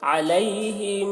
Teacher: میم مشدد ہے تو یہاں پر غنہ بھی ہوگا